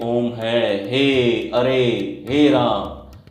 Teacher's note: ऐसा लगे जैसे दूर से कोई बुला रहा है, कोई आवाज लगा रहा है, तो ऐसे स्वर को हम क्या बोलते हैं, ऐसी ध्वनि को हम प्लुत स्वर बोलते हैं।